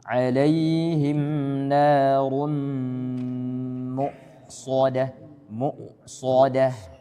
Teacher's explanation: Tebal ra-nya. Kemudian hamzah sukun dia harus jelas. Ya karena dia sifatnya jahar, jelas.